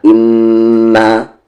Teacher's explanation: میم پر غنہ اور یہاں پر 3 سے 4 حرکت کے ایکول کھینچیں گے